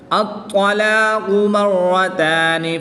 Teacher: را مشدد پر زبر ہے تو اس لیے اس را کو پر پڑھیں گے